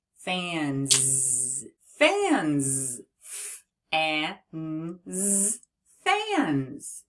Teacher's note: when we have a voiced sound followed by an S, that S is going to make the sound Z. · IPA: /z/